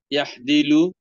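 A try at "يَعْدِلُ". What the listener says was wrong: আদালা, আইনের উচ্চারণটা হায়ের মতো হয়ে যাচ্ছে আপনার। ইয়া আদিলু।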